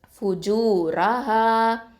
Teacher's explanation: இந்த ரா வந்து தஹிமா ஓதணும் வல்லினமா ஓதணும்